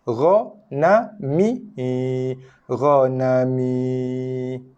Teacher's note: ra satu harakat, na satu harakat, mi satu harakat. Ya al-Jauf ataupun ya rongga mulut ini dua harakat.